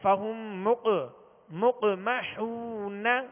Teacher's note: دو نقطے والا قاف، کیا کریں گے یہاں پہ؟ قلقلہ کریں گے